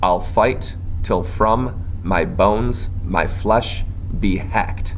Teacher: five metrical feet each consisting of one short or unstressed syllable followed by one long or stressed syllable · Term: iambic pentameter